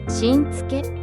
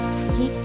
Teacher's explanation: 쯔와 스는 입모양과 혀의 위치가 매우 유사하지만 쯔는 마찰음보다는 파찰음에 가깝게 발음됩니다. 마치 티읕과 시옷 발음을 동시에 내는 듯한 느낌인데요. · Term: 쯔 발음